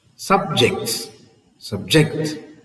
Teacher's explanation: Subject, the stress is on the second syllable.